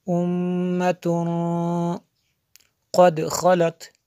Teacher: تنوین کے بعد قاف حروف اخفا میں سے ہے، یہاں پہ اس لیے غنہ ہوا